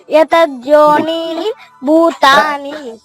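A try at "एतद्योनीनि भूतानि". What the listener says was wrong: ఎన్నిసార్లు చెప్పినా ఎతద్దు కాదమ్మా, ఏతద్యోనీని. ఏతద్యోనీని భూతాని.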